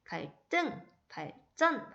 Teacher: 자, 한자 받침, 리을이 왔을 때, 그러니까 원래 이제 갈등도 한자가 합쳐진 거고 발전도 한자가 합쳐진 건데 한자 받침 리을이 앞에 왔을 때는 이 디귿, 시옷, 지읒이 된 소리, 쌍디귿, 쌍시옷, 쌍지읒이 됩니다.